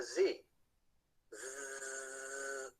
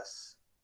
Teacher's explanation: z z and then alternate between the S and the Z you should be able to feel the vocal cord vibration turning on and off as you toggle between the z sound and the S sound · the sound Z is a voiced consonant made with vocal cord vibration by contrast s is made with the vocal chords held apart that is the glotus is wide open so there's no vibration